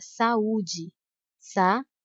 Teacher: a letra a e a letra U são pronunciadas com a mesma intensidade E as duas são vogais você acertou como essas duas letras são vogais elas não podem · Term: hiato